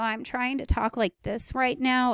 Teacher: I'm trying to keep my voice low, and you can occasionally hear some of the creaks. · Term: creaky voice